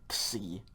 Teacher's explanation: The letter's name is Xi, okay, just X-I, Xi. And so, you're going to pretty much get like a K and an S sound together